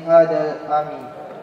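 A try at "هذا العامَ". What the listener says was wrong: Kasrah lagi. Hadal ama.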